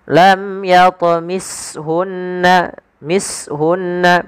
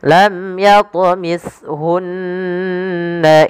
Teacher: Agar sempurna daripada makhraj daripada huruf ta, lidah harus ujung lidah yang harus menempel dengan gigi seri atas · hati-hati di dalam melafalkan huruf ta, jangan diganti dengan huruf sin, karena sering terjadi menggantinya dengan huruf sin.